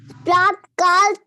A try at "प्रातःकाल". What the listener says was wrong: प्रात नहीं है बेटा, सुनो, आ की मात्रा मैम ने सिखाया था ना, तो प्रा और आ की मात्रा, प्रातः, प्रातः काल।